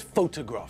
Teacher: there the stress is on the first syllable just like in Hungarian